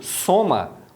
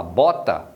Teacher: soma, o O tem som de O, é fechado. Se você fala bota, o O tem som de O, né? O som aberto.